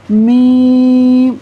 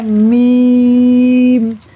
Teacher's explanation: میم منہ سے پڑھنا ہے، ناک سے نہیں پڑھنا. یعنی ہم نے یوں نہیں پڑھنا میم، یہ سیدھا سیدھا ناک میں جا رہا ہے.